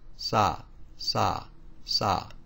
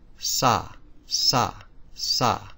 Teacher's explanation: now you should feel air on your palm as it is aspirated